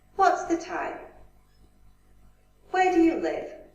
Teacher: the question starts with a rising intonation, then falling intonation.